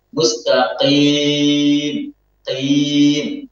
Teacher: Ya, dia terlalu menekan tengah-tengah lisannya. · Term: takalluf